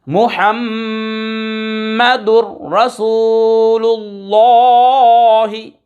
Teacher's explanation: دو پیش کی تنوین کے بعد را حروف یرملون میں سے آ رہا ہے، ادغام یرملون بلا غنہ